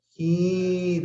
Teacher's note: la mayor fuerza de voz está en la última sílaba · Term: aguda